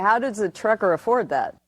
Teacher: here we can hear the D, the TH is gone